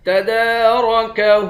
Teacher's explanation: دال پر کھڑا زبر ہے، ایک الف کے مقدار کھینچیں گے، را کو موٹا پڑھیں گے ، ہا کے اوپر الٹا پیش ہے، اس کو بھی ایک